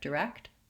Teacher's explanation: But when I have a KT together, direct, I typically release those sounds so that you can hear that there's a K and a T. People may have the accent error pattern of just saying direct without the T, and it will sound incorrect and accented. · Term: KT sound